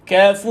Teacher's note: Sebab huruf yang sebelum tu yang hidup iaitu huruf fa tu baris di depan, maka kita muncunglah kafur. Tapi ka tak muncung. Ka baca ka. Nipis ka. Yang tebal adalah fur itu tuan-tuan.